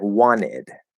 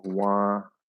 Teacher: we'll drop the T and we'll connect the N. So we actually have two rules being applied at the same time, and it sounds like wanted. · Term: NT plus vowel connection rule